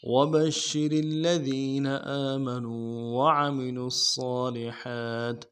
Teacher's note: وبشر میں با کو شین کے ساتھ ملانا ہے، شین کے اوپر تشدید زور دیں گے، اور را کو باریک ادا کرنا ہے ، را کو آگے لام کے ساتھ ملانا ہے، وبشر الذین،